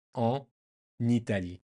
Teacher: So if you want to pronounce it really good, you just imagine in your head that Italy has an N at the start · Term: nice little connection